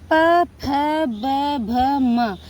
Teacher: आप प को जब भी बोलते हैं, फ को, ब को, भ को, म को जब भी बोलते हैं, तो यह हमारा उच्चारण, हमारे दोनों ओठ एक दूसरे से मिलते हैं, इसलिए ये ओष्ठ कहलाते हैं।